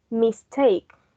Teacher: The stress remains on the root word, that in this case is take, and the prefix, it does not take the primary stress.